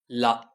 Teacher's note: லா மேற்பற்களின் அடியை தொடுவதால் லகரம் தோன்றும்.